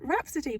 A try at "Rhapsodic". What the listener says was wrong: Rhapsodic. Rhapsodic. You said Rhapsody.